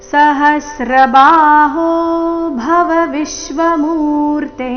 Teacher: ಹ ಮೇಲೆ ಆಘಾತ ಬಾಹು ಎರಡು ದೀರ್ಘ ಸಹಸ್ರಬಾಹು ಭವ ವಿಶ್ವಮೂರ್ತೆ ವಿಶ್ವ ವಿ ಮೇಲೆ ಆಘಾತ ಮೂರ್ತೆ ಎರಡು ಅಕ್ಷರ ದೀರ್ಘ